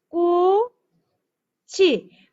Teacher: 창 하고 바 하고 쌍기역이 위로 넘어가서 창밖을이 됩니다. 아, 밑에 있는 받침 소리가 뒤 음절 첫 소리로 발음 나네